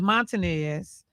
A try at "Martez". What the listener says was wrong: That's how they try to pronounce it, Montanez. No, do you see any N in that name?